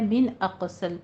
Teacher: اق میں قلقلہ بھی کرنا ہے اور قوف کو پر بھی پڑھنا ہے ، صاد کو بھی پر پڑھنا ہے، مدینتی میں یائے مدہ،